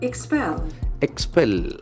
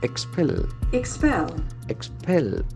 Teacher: It's made up of two syllables, and the accent falls in the second syllable.